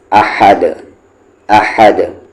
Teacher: احد، احد نہ کہ احد، ایسے نہیں، احد، احد۔ اور اس ہا کا مخرج کیا ہے، ایگزٹ کیا ہے، بیچ والا حلق